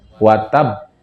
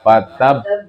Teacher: terakhirnya huruf qalqalah ada tasdidnya. Jadi ditahan dulu baru dilepas.